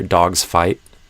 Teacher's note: Because the F is unvoiced, you might hear the Z sound at the end of dogs becoming kind of like an S. And maybe it still starts as a Z, but you have that partial final devoicing where a lot of the sound is devoiced.